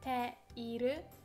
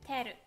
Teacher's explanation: when we are talking, especially in informal speech, we drop the I bit. So instead of saying te iru, we say teru.